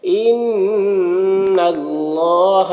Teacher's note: ان اللہ نون مشدد غنہ ہوگا اور اللہ کے کلام کو پر پڑھیں گے